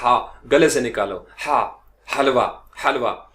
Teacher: तो वो हा साउंड ग्लोटल जो गले से निकलने वाली है